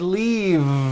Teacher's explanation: It's not leaf with an unvoiced F. I should have said leave with a voiced V sound.